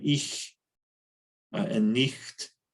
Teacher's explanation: the word ich and nicht have a palatal fricative in them